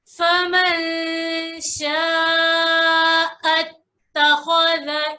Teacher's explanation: इख्फा का कायदा होगा, यानी छुपा गुन्ना करेंगे।